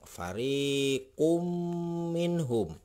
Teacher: Karena ini adalah idgham biguna, harus dengung.